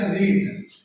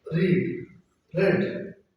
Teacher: because long close vowel change into short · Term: long sound